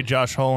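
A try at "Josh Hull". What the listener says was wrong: You're saying H-U-L-L. but it sounds like like Josh Hole.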